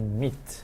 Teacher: the E sound is more forward, it's closer to the lips